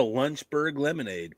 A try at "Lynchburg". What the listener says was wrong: Yeah, you said Lunchburg. That's why it confused us.